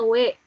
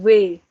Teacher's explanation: W-nya kalau bahasa Indonesia tuh ringan ya, W. Ya. Kalau bahasa Jerman W. Jadi agak digigit gitu.